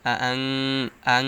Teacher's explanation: নুন সাকিনের পরে ইকফার হরফ জাল আসছে, তাই গুন্নাহর সহিত গোপন করে পড়তে হবে। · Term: ইকফা গুন্না